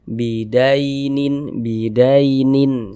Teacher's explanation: Maka huruf ya sukunnya adalah huruf lin. Harful lin. Nah, kita baca lunak, lembut saja ya, tidak memberatkan lisan.